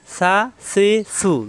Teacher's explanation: জিহ্বার আগা দাঁতের আগায় লাগিয়ে নরম করে উচ্চারণ। সা একালি পরিমাণ টানা যাবে।